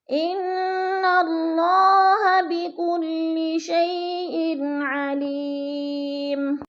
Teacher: شیئن علیم، علی، یا ساکن سے پہلے لام کے نیچے زیر ہے تو ادھر یا مدہ ہے. علیمن، یہ دو پیش تنوین ہے لیکن وقف کی صورت میں ہم نے اس کو میم کو ساکن کر کے پڑھنا ہے